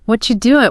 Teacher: The ke in what combines with the are you to make that chi sound and the end of doing often gets clipped. The G sound drops off.